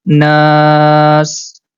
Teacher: can see the alif is appearing in orange color which means we have to stretch the na sound at least for three count